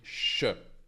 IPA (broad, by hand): ʃ